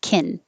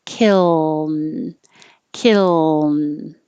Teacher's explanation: Kiln. Otherwise, because they're made in the same place, the L and the N both touch behind the top teeth, it could disappear and sound like kin. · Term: L noise